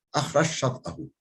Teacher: Cim şine dönüşüyor ve şinde idgam oluyor